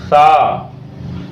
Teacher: زبان کی نوک اور دانتوں کی چونچ سے ہلکی سی زبان ٹکرا کر نکلتا ہے